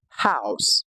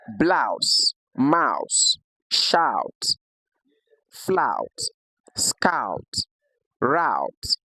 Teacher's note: a combination of the short a and the short uh which gives us the pronunciation as in the word house